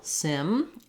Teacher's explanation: it has a lax I vowel like in did, or like I said, simple